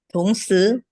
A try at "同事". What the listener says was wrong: Nadanya 是 nada 4. 是 nada 4.